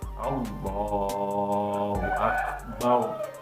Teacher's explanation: ini lamnya harus dibaca tafkhim tafkhim itu artinya apa tebal seperti contoh ini harus tebal tidak boleh tidak boleh tipis ya